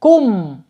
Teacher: Ketemu lagi mim sukun di situ. Mim sukun yang menghadapi huruf alif ya. Jadi bacanya idhar syafawi ya. Dibaca jelas mimnya.